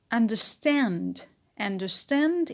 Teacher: the stress is on stand and we have a secondary stress on the first syllable